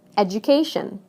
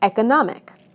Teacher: Listen to how the stress moves right to the syllable immediately before the suffix.